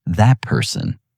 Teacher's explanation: the T at the end of that and the P at the beginning of person pull toward each other and the result sounds more like that person. · The T softens. It shifts. It accommodates the next sound before it arrives.